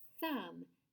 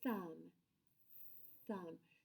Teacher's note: It's a quiet sound and our voice box is turned off, like in the word thumb. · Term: not voiced